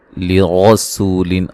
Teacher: را کو موٹا ادا کریں گے، سین کو باریک سیٹی سے ادا کریں گے